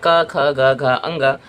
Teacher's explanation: यह जो वर्ण है ये सीधे-सीधे कंठ से बाहर आते हैं। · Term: क वर्ग